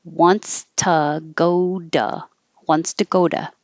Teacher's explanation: this T is between the O from go and the O from to, so it can change to D.